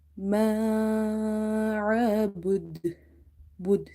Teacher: dal is qalqala letter, so there will be a bounce or reflection in the sound.